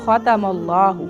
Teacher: خا کو موٹا پڑھنا ہے، لفظ اللہ کو بھی موٹا پڑھنا ہے